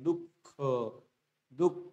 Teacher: ह ला. कारण की विसर्गाचा उच्चार करत असताना आपण ह या वर्णाला थोडासा हिसडा किंवा झटका मारून उच्चार आपण करतो